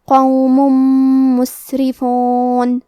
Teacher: کلمت قوم میں حرف القاف کو موٹی آواز میں پڑھیں گے